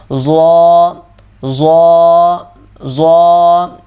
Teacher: ضا زا بھی نہیں پڑھ دینا اور زال بھی نہیں، زال کی طرح بالکل سموتھ بھی نہیں کرنا، درمیانی آواز میں اور موٹا کر کے.